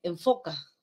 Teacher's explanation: el labio inferior se ubica debajo de los incisivos superiores y tenemos el sonido F en foca